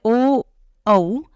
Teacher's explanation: ओ औ इन दोनों वर्णों का उच्चारण कंठ और ओष्ठ दोनों स्थानों से होता है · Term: कंठोष्ठ्यो